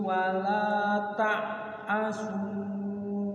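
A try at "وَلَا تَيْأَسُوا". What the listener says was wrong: Ada ya sukun, wala tayasu, bukan ta'asu, tayasu.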